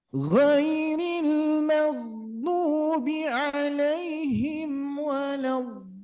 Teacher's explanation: ini kita coba re-nya jangan sampai mantul ya